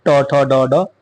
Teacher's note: अगर बात करें जीभ उल्टा करके जिसे बोलते हैं ट ठ ड ड यानी कि मूर्धन्य